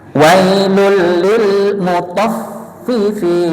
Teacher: Lulnya jangan ditambah lama. Tofnya juga.